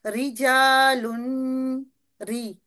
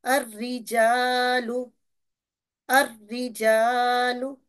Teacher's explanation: कसरा वाली र जो बगैर तद के हो उसको हमने बारीक अदा करना होता है